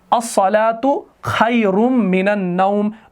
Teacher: من کے اندر جو یہ نون ہے یہ ساکن ہے، لیکن جب آگے ملایا جاتا ہے تو یہ زبر میں تبدیل ہو جاتا ہے